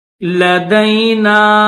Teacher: نون کے اوپر زبر بھی ہے اور چھوٹی مد بھی ہے تو اس کو تھوڑا سا کھینچیں گے